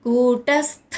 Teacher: కూ దీర్ఘాక్షరం ట హ్రస్వంగా పలకాలి స్థ స్థ స్థ అని పలకాలి. థ థ అన్నమాట మహాప్రాణక్షరం థ ఒత్తుగా